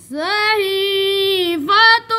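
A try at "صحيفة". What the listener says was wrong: سواد موٹا پڑھو نا.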